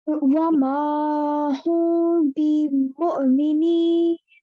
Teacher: So can I get you to, so this was a 2 second strong gunna, and here we're going to a 2 second gunna, but it's not press, we're not going to press so hard. We're going to give it a light gunna.